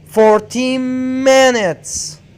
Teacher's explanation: you have to put the stress on minutes